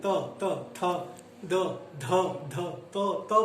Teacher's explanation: दंते का मतलब होता है जिसमें आपके दांत आपके किसी उच्चारण केंद्र को टच करें। जैसे जीभ की नोक ऊपरी दंत पंक्ति को स्पर्श करती है। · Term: दंत ध्वनियां